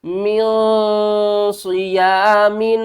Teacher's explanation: نون ساکن ہے، اس کے بعد حروف اخفا میں سے صاد آ رہا ہے تو ہم کیا کریں گے، نون کی آواز کو چھپا کر پڑھیں گے۔